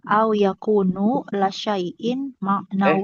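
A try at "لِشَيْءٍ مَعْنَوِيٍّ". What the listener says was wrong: Kok la syai'in? Li itu li. Maknawiyin, maknawiyin.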